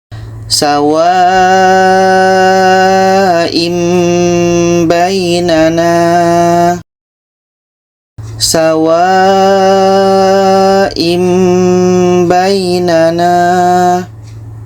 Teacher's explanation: bunyi tanwin kita ubah kepada bunyi mim dan di sini ada dengung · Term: iqlab